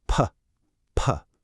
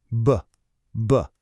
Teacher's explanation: One is just air, the other one kicks on your voice.